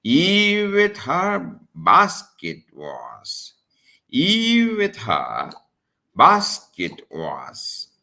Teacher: Eve stressed with her unstressed. Basket stressed. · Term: dactylic meter